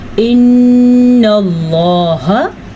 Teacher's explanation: نون کے اوپر شد ہے تو نون کے اوپر غنہ کیا جائے گا